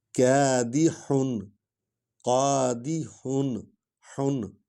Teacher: ہا جو ہے یہ حلق سے نکالنی ہے